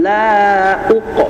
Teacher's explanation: Tetapi perbedaan antara uqo dengan lad pada akhir kalimat ini yang membedakan adalah ketebalan hurufnya. Kalau huruf qaf bertanda sukun, dia pantulannya juga tebal karena dia bersifat tebal. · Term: qalqalah